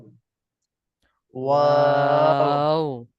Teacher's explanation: দুই ঠোঁট গোল করিয়া পাতলা আওয়াজে ওয়াও।